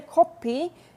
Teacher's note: if you say kopi with more of an o sound, that means nosebleed in Korean.